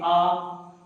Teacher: उच्चारण करते समय हमारा मुख पूरा खुला होता है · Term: विवृत स्वर